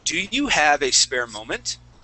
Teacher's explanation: when we ask a question, okay, our voice is going to go up at the very end. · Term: question intonation